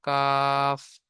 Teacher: 5 নম্বর মাখরাজ, জীবের গোড়া হতে একটু আগে বাড়িয়ে তার বরাবর উপরের তালুর সাথে লাগিয়ে উচ্চারিত হয় মধ্যখান পেঁচানো কাফ